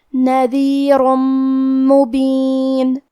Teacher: تو ہم یہ تنوین کو میم میں ملا کے غنہ اور تشدید کے ساتھ یہ حکم کو ادا کریں گے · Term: ادغام